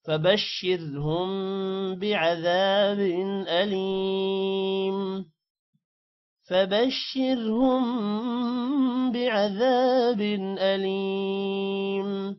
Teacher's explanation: را کو موٹا نہیں کرنا، میم پر غنہ کرنا ہے، اور بن پر غنہ نہیں کرنا حروف حلقی کی وجہ سے